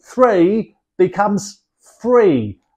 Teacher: change the th sound to an F at the beginning of words